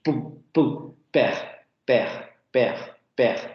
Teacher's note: De manera genérica, no va a tener este tipo de fenómenos como la aspiración, ya sea al principio de sílaba, al final de palabra, etcétera, se va a pronunciar como una bilabial sordo-oclusiva, igualita que en español. Pu, pu, per, per, per, ninguna especie de aspiración, ¿vale?